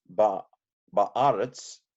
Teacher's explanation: lengthened the patak, which is a short a, into a kamatz, which is a long a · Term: compensatory lengthening